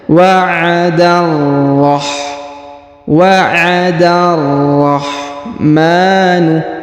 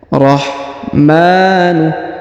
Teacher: huruf da langsung sambung ke alif lam syamsiyah di sini pada huruf ro yang berharokat tasdid ya